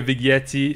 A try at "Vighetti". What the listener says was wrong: Vighetti? You don't pronounce the G. Vighetti.